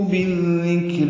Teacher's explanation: بالذکر، با کو ذال سے ملائیں گے، ادغام ہوگا. ادغام شمسی ہے یہ، اس لیے ذال مشدد ہے، ذال باریک ہے، نرم پڑھیں گے